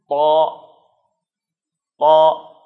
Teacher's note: زبان کا درمیانی حصہ اوپر چھت سے لگے گا اور زبان کا جو اگلا حصہ ہے، جو ٹپ ہے، وہ آگے والے اوپر کے دو دانتوں کے پیچھے جڑ پر جا کر لگے گا، تو یہ طا ادا ہوگا، طا طا۔